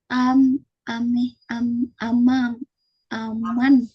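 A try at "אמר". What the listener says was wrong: Amar, Amar, Haish Amar. Mungkin bingung tadi ini Resh Dalet.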